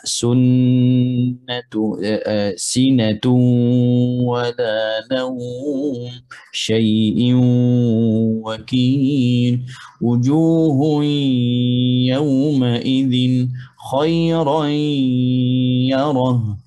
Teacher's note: idgham naqis sebab ada sifat yang tertinggal, tidak boleh gabung dengan huruf nun, itu sifatul gunnah